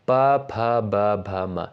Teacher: प वर्ग के अंतर्गत आने वाले वर्डों का उच्चारण स्थान होता है किससे? होता है आपका ओष्ठ से।